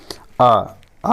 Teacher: मध्य स्वर बस एक ही है उसका आ जब भी उच्चारण करते हैं तो जीभ का मध्य भाग से उच्चारण करते हैं